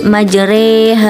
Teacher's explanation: secara bahasa berarti cenderung atau belok dalam istilah qiroat imalah berarti sedikit membunyikan fathah ke arah kasrah atau setengah kasrah dan setengah fathah sehingga bunyinya menjadi e · Bismillahirrohmanirrohim pada dasarnya setiap Alif yang berharakat fathah dibaca a namun khusus pada lafal majreha dibaca e sehingga bunyinya menjadi majere